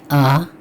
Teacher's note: ये जिस अलिफ पर मद होगी उसे अल्फ़े ममदूदा कहते हैं और उसे हम लंबा करके पढ़ते हैं